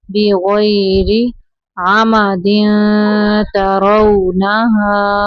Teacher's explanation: را کے نیچے زیر ہے، را کو باریک پڑھنا ہے